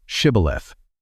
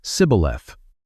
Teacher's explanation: the dialect of the Ephraimites did not include the sh sound. When an Ephraimite tried to speak the password, he could only say sibboleth.